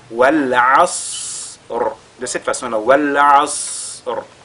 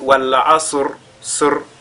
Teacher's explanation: Si vous faites Wal Asr, sur, là vous aurez lu la lettre Sad, n'est-ce pas, comme si elle était une lettre de Al-Qalqala. Donc il faudra que le Sad soit aspiré par le Ayn. Donc on lit Wal Asr.